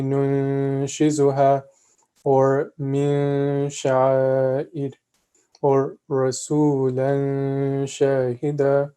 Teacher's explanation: we're going to extend it, we're going to prolong the sound, and we're also going to nasalize it a bit. So we're going to say Nun Shizuha, or Min Sha'id, or Rasulan Shahida.